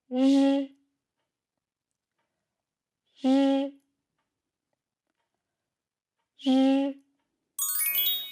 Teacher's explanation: quand vous prononcez le son j, votre gorge doit vibrer plus fortement.